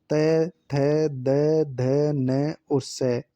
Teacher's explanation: त थ द ध न और स ये दंते वर्ण हैं।